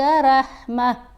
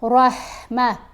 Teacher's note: را کو پر پڑھیں گے، ہا کی آواز نرم آواز بنے گی، ہلکی حروف ہلکی ہے نا ہا، تو یہ گلے کے درمیانی حصے سے آواز پیدا ہوگی